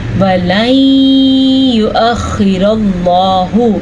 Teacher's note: وَلَن يُؤَخِّرَ اللَّهُ، اس طریقے سے ہم غنہ کریں گے۔ وَلَن، یہ جو آپ کو آواز آئی ہے نون کے بعد یا کی، اسی کو ادغام بالغنہ کہتے ہیں